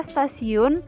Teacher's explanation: Asimilasi progresif terjadi bila arah pengaruh bunyi itu ke depan, seperti perubahan bunyi T yang biasanya dalam bahasa Indonesia dan Jawa diucapkan secara apikodental, tetapi dalam kata stasiun, letup T itu diucapkan secara lamino-alveolar. Perubahan letup apikodental menjadi letup lamino-alveolar karena pengaruh secara progresif dari bunyi geseran lamino-alveolar.